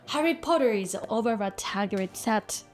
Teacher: In British English, we don't pronounce the r like Americans do, and therefore replace the r sound at the end of words like potter with a simple schwa, potter. However, if the next word begins with a vowel sound, we do pronounce the r It intrudes into the two words. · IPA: ɹ